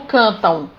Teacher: Cantam-U. Então eu tenho a vogal A e a semivogal U. O M representando o som U.